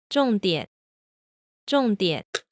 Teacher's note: okay here's a 4-3 combination all right here we see that the fourth tone actually does go pretty much all the way down however notice that the second syllable that third tone still starts lower than the end of the fourth tone also notice that again we're hearing the half third tone here